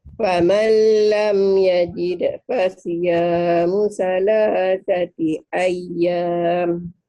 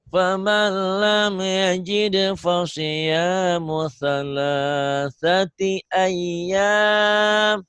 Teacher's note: Famal jangan ditahan, la nyamber tapi jangan ditahan. Karena ini idgham bila gunnah, tanpa dengung, tanpa ditahan, tanpa gunnah.